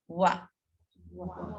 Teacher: It's not va, it's like an in between a V and a W.